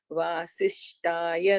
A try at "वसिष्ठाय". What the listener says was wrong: Vasishtaya. Tha is a Mahaprana there.